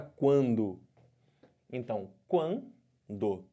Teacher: pergunta de tão crescente ou decrescente volta para o triângulo aqui do U para o A tá crescendo ditongo crescente · O som sai pela boca e sai um pouco de som pelo nariz. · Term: ditongo crescente nasal, ditongo nasal